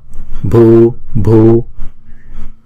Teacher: chữ bờ h này là chúng ta phải đọc âm bật bờ bờ.